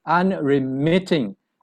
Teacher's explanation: the syllable is stressed on the third · The stress is on the third syllable. So it's unremitting.